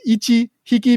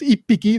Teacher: Now, when we get to animals, all right, usually, I think generally speaking, what you're going to hear is hiki, or due to a phonetic, right, due to a phonetic nuance of Japanese, sometimes it turns into piki. So, for example, ichi hiki becomes ippiki.